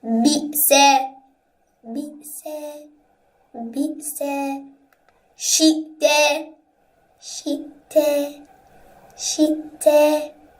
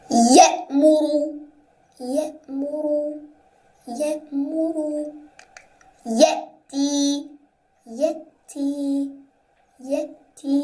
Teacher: Hamzah Sakinah is read with a jerk while reciting.